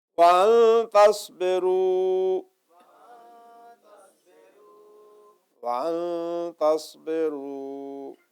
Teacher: تو ہم نون کو جو ہے چھپا رہے ہیں, تو لائٹ نیزل ساؤنڈ ہو جائے گی. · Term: اخفا